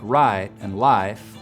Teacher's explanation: words like right and life will have a diphthong